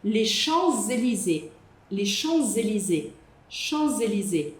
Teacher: O S no final das palavras a gente não fala em francês porque aqui a gente vai fazer a lzon.